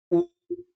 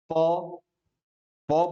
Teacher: उ बोलने में मेरा होठ हिलेगा ही, प प बोलने में मेरा होठ हिलेगा ही, ये सभी ओष्ठ वर्ण कहलाता है।